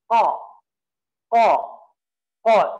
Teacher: qa yang memiliki makhraj di pangkal lidah, ya. Di pangkal lidah naik ke atas, ya.